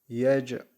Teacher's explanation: cim harfi cezimli geldi burada kalkale var